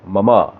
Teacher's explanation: मम के बाद में विसर्ग के बिंदु नहीं है, ममहा नहीं करना है, मम। कई लोग मम कर देते हैं, म और फिर आधा मम, वो भी गलत है।